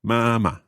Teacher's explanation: first tone then neutral tone